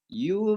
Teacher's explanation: Ditebalkan. Jadi jangan ditipiskan. Kalau ditipiskan jadi sin nantinya. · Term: sad